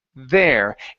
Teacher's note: when I say the word my tongue sticks between my teeth there and it's not touching the top of my tongue the top of my mouth